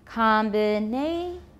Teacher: And even without a low rising tonic, combinations, it still sounds like a yes-no question. But for continuation rise, we go high up for the tonic. Then for the remaining sounds, we go low and add a gentle rise.